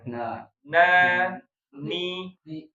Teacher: Enggak apa-apa diperjelas nempelnya bukan di gigi tapi digusi. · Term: nun